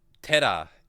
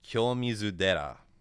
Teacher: And so, in words like there is a temple in Kyoto called Kyomizu Dera, and the Dera is what happens when Tera undergoes rendaku. You voice the first syllable, so it turns the T into a D.